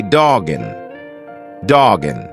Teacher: because we have a hard consonant dog and then a vowel when you've got that hard consonant followed by a vowel just push the two together like it's one word